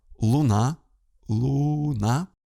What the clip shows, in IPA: ɫʊˈna